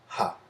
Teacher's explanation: And then you have your glottal fricative, which is just ha.